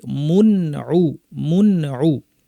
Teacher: এখানেও তানউইন বা নুন সাকিন একই জিনিস, পরে আইন আছে, স্পষ্ট করে বলতে হবে গুন্নাটাকে স্বাভাবিক রেখে